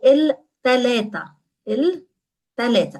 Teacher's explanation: Again, a ta instead of a tha.